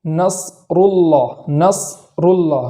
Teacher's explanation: تو اس کے جزم کے ادا کرنے کا طریقہ یہ ہے کہ صاد کی آواز جب جاری ہو تو جاری کرنے کے بعد ختم کر کے وہاں اسٹاپ کریں گے، پھر آگے والا حرف پڑھیں گے، جیسے نصر اللہ، نصر اللہ۔